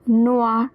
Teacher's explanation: o i is pronounced as wah, so noir